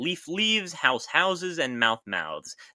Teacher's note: they picked up a new source of voicing, in being between two vowels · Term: voicing of intervocalic fricatives